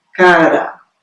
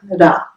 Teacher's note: se realiza como um flap, ou seja, é uma leve batida da ponta da língua contra os alvéolos e não pode ser nem emitido, nem ouvido isoladamente.